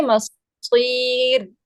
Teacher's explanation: یہاں پہ آپ نے دیکھنا ہے کہ یہ جو را ہے نا, وقفاً ہم اس کو ہم باریک کر دیں گے. مصیر کر کے نہیں پڑھیں گے اس کو, ٹھیک ہے. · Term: را باریک